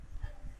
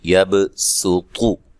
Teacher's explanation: یہ جو یبسطو ہے یہ خالص سین کے ساتھ پڑھا جائے گا، ٹھیک ہے، یہ جو سین چھوٹی سی پڑھی ہے نا، اس سین کی آواز آئے گی، صاد کی آواز اس میں نہیں آئے گی